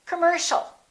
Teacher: And the final word, once again, the second syllable is stressed. The O and the IA are both reduced.